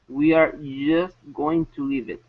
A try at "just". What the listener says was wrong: Okay, now here you're saying just. Okay, so when we pronounce the J sound, okay, you have to have a vibration. Right now you're not pronouncing a vibration, you're saying just. Okay, so when you pronounce the J, your lips need to come out. Okay, J instead of just. Okay, because I can pronounce the Y sound without moving my lips.